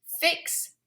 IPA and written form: fɪks (Fix)